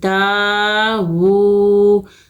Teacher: واو الٹا پیش وو، وو کو بھی کھینچیں گے، الٹا پیش کو ہم 2 حرکت کھینچ کے پڑھتے ہیں